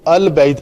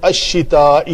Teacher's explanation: شین شمسی حروف میں سے ہے، الف لام کا اس میں ادغام، لام کا ادغام ہوگا شین میں، تو اس کے اوپر شد لکھی جائے گی.